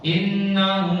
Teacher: panjang ya satu alif jangan tidak dipanjangkan